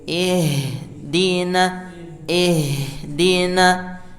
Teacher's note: huruf h-nya usahakan tidak memantul. berhembus, namanya hams. Ihdina, ihdina, jadi jangan sampai kita tahan supaya cepat berhenti dia, ya.